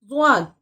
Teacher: ضاد زبان کا ایک کنارہ جب اوپر کے سخت تالو اور داڑھ کی جڑ سے لگے، جب ضاد ادا ہوتا ہے